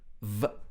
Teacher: your top teeth are touching your bottom lip